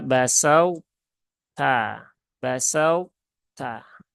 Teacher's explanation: idghamnya idgham naqis ya, sehingga peleburannya dia itu tidak sempurna. Sehingga masih tersisa sifat idbaq dari huruf to-nya ya.